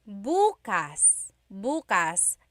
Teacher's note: the second syllable that means open if you say buas buas emphasis is on the first syllable that means tomorrow